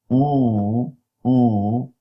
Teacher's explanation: There's much space because the tongue is moved back and up. So as a result, you create a huge space.